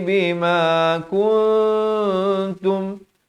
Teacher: Samarkan ikhfa hakiki di sini. Nak kata nun pun tidak, ta pun tidak, dengan kadar panjang 2 harakat.